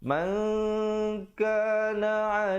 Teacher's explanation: Jadi kita sembunyikan nun matinya di belakang kaf dengan 2 harakat. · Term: ikhfa